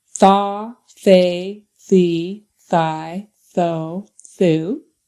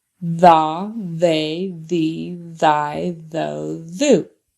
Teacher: the loud TH is when you turn on your voice